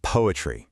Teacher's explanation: The poe gets the strong beat.